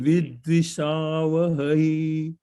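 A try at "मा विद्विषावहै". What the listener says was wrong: Yeah, that Vidvishavahai, that it's a little bit elongated, like Vidvishavahai, like that.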